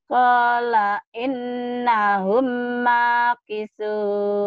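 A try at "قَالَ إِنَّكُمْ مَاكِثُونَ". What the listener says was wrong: Bukan innahum, innakum. Qala innakum. Qala innakum makisun.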